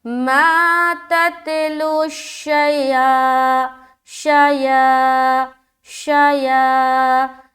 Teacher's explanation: شا کو جل ادا کر رہے لیکن یا کو ہم کھینچ رہے